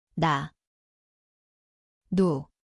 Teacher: 니은, এটি এর মতো শোনায়। স্থান হল জিভের টিপ উপরের মাড়ি।